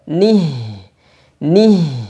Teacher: kemudian nih Jelaskan Nun kasrah ni bertemu dengan ha yang sukun ha ketika sukun maka dihameskan dirakhawahkan suara dan nafasnya dialirkan